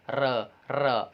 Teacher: आपकी जो जिह्वा है उसमें कंपन, एक से अधिक बार कंपन आ रहा है, तो प्रकंपन है यहाँ पर, इसे इसलिए प्रकंपित वर्ण कह दिया जाता है।